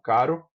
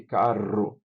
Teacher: Caro, uma vibração na língua, caro, e vibrante múltipla, aqui, veja, não chamada como se chama, por exemplo, em italiano, de vibrante dupla, porque há só duas vibrações. Chamou de múltipla porque você normalmente precisa vibrar mais de duas vezes para o ouvido brasileiro distinguir. Então, caro e carro, há pelo menos quatro vibrações.